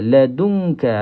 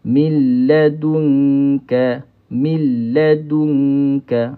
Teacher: So bila kita ladunka, kita sentuhkan tempat kaf ini kepada lelangit. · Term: ikhfa hakiki